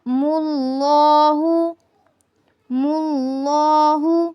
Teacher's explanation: لفظ اللہ پر کیا ہے؟ تفخیم ہے، پر پڑھا جائے گا۔ اللہ، ہم نے یہاں پر لفظ اللہ کو پر پڑھا۔